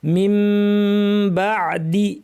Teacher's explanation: করে মিম বানিয়ে পড়তে হবে আবার মিমের গুন্নাটা বাড়িয়ে দিতে হবে ঠোঁট দুইটা স্বাভাবিকভাবে লাগিয়ে আমরা নাক থেকে লম্বা গুন্না করে পড়বো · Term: ইকলাব